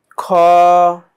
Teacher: হলকের শেষ ভাগ থেকে এই খ এর উচ্চারণটা বের হবে।